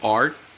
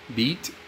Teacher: the t sound is made through the mouth and it is unvoiced